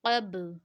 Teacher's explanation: با جب بھی ساکن ہوگا تو قلقلہ والا ساؤنڈ آئے گا یعنی جنبش والا ساؤنڈ نکلے گا